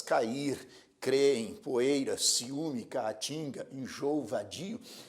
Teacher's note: iato é encontro de duas vogais porém em sílabas diferentes